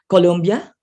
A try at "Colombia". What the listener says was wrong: Colombia, not Columbia. Colombia.